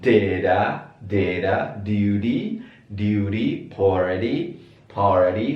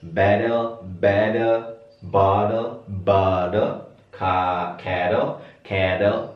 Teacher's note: kalau pengen suaranya kayak orang Amerika, T-nya ini semuanya diganti menjadi D.